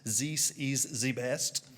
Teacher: If you want to fake a French accent, just turn your THs into Zs.